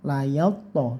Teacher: go-nya panjangan 1 alif atau 2 harokat